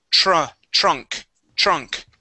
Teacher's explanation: With the TR sound, we want to replace the T with a CH.